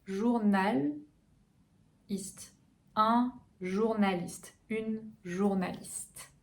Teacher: Donc pour le ou, n'oubliez pas, c'est plus vers l'arrière.